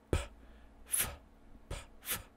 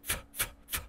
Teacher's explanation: P is a voiceless bilabial stop, but F is a voiceless labial dental fricative. So they're very close.